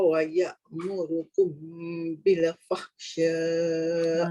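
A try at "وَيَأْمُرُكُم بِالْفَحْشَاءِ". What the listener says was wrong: Jaga dekat bil, jangan bila.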